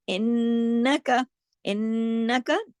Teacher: انکا، انکا تشدید ہے، غنہ ہوگا، نون پہ تشدید ہو تو بڑا غنہ ہوتا ہے، اکمل یعنی آواز کو ناک میں دیر تک چھپایا جاتا ہے، لیکن کاف کو زیادہ نہیں کھینچیں گے۔